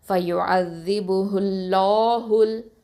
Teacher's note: ஹெவியாக வல்லினமாக ஓதணும். அப்போ வாயை நல்லா ஓப்பன் பண்ணி அல்லாஹ் சொல்லுங்கள்